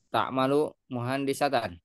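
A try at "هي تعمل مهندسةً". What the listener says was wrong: Sahih.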